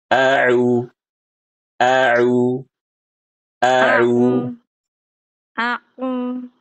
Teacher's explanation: Ibu ada masalah jeda antara a dengan U. Jadi bacanya tuh cepat, Bu.